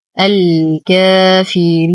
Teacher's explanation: لو وقفنا على النون بسكون عارض قبله حرف مد، إذا يتشكل لديه مد عارض للسكون وقفا وطبيعي وصلا. · ننتقل من فتحة اللام الأولى إلى إسكان اللام القمرية، حرف المد يسقط بسبب التقاء الساكنين. لدينا ألف صغيرة خنجرية ما قبلها مفتوح، فهو مد طبيعي